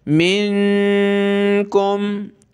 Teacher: نون ساکن، یہاں اخفا کرنا ہوتا ہے، یعنی ناک میں آواز چھپائیں گے